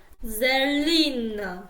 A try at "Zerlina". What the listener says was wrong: You do a TS sound instead of the Z. Ser. So like a TS, like a Selina.